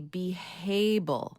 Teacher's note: sometimes some speakers will add like an H sound.